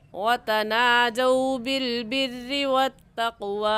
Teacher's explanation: قاف حروف قلقلہ میں سے ہے، قلقلہ کریں گے · لین کو ہم کھینچ کر نہیں پڑھیں گے بلکہ نرمی سے اور جلدی سے پڑھ جائیں گے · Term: واو لین